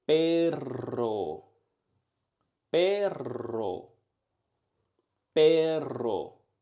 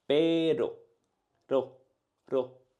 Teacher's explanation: When we say perro, dog, we feel many vibrations. But when we say pero, we just feel one touch.